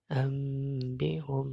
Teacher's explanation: Dibaca gunnah 2 harokat. Ambihum, nun sukun berubah menjadi mim ya. Ambihum. Nah, biasanya ditandai dengan huruf mim kecil. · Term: iklab